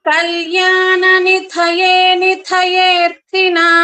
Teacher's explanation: నిధయేర్థినాము ending లో మాకు పొల్లు ఉంది, నాము అనేసి వినిపించాలి. శ్రీ వెంకట నివాసాయ శ్రీనివాసాయ మంగళం.